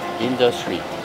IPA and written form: ˈɪndəstri (Industry)